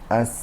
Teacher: انتهای نوک زبان همراه با پایین‌ترین قسمت داخلی دندان‌های پیش آرواره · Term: حرف سین و زای و صاد